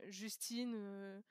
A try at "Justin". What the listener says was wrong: Justin, par exemple, ça c'est Justin. Justin, le N ne se prononce pas, c'est un «n». oui, puis il y a un «e» aussi.